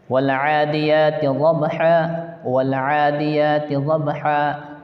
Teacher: کنارہ زبان داڑھ سے مل کر ضاد ادا ہوتا ہے